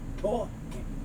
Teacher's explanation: the L is not sounding, so it's talking. And the K sound moves over to the I.